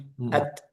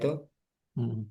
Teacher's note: hamsnya itu cukup dilepas enggak perlu didorong jadi enggak ada dorongan sama sekali at hanya dilepas at setelah syiddahnya it cuma dilepas at it Jadi cuma sisanya aja gitu ya.